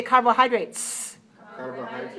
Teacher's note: When we say carbohydrates, carbohydrates, the ending is voiceless.